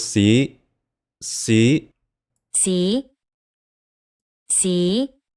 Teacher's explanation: Hear that rising tone? That was the high rising tone.